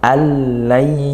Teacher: Nah, kalau kita mencet ini disentuh ini hidung, nah di situ ada getaran, tanda ada keluar suara dari rongga hidung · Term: bunyi sengau